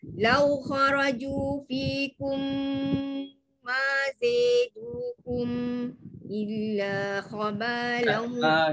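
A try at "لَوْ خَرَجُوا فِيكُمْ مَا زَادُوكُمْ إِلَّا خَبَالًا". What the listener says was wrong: Jangan nampak sangat situ. Dia jadi macam dengar tu macam sakta. Belum sakta lagi. Macam tu je tahkik je.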